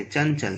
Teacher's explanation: इसको अनुस्वार कहते हैं। इसका उच्चारण नाक से होता है।